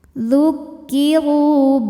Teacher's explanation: Ru dihukumi dengan mad tabi'i zahiri. Sebab ada waw sukun yang sebelumnya berbaris dhammah. Maka huruf ra panjang 2 harokat.